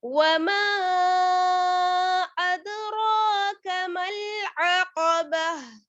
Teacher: यहाँ पर जैसे अदराका में रा जो है वो मोटी पढ़ी जाएगी